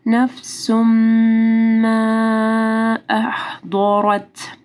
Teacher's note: ما کو نرم پڑھنا ہے، ما نہیں پڑھنا ہے، ما. اور مد ہے، اس کے بعد حمزہ ہے، تو 4 سے 5 حرکات کے برابر لمبا کرنا ہے